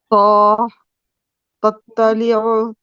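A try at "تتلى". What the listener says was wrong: नहीं, अब एंड वाला आपका तो लाइट हो गया थोड़ा सा,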